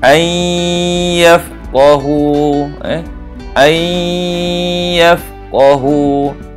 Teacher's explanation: Jadi dimasukkan nun ke dalam ya dan didengungkan anyafqahu sebanyak dua harkat anyafqahu. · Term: idgham ma'al lunah